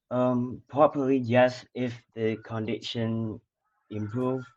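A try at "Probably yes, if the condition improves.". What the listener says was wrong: So notice the intonation. Duh, duh, duh, duh, duh, duh, duh, duh, duh. I wouldn't say it's overly natural intonation. It is a little bit staccato. Again, this is both fluency and pronunciation. Two of those things are kind of, closely linked.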